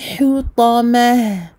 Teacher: Attention à ne pas emphatiser le ha qui le précède. Et on termine évidemment avec un soukoun et surtout avec un ha à la place du ta.